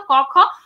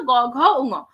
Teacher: বর্গের প্রথম দুটো ধ্বনিতে এই ঘোষ বা ধ্বনির অনুরণনটা অনুপস্থিত থাকে, বর্গের প্রথম দুটো ধ্বনিতে অনুপস্থিত থাকে, পরের তিনটে ধ্বনিতে উপস্থিত থাকে, সেই কারণে বর্গের প্রথম দুটো ধ্বনিকে বলা হয় অঘোষ ব্যঞ্জন এবং শেষ তিনটে ধ্বনিকে বলা হয় ঘোষ ব্যঞ্জন।